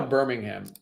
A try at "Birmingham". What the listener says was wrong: No, there's no H. That H is silent.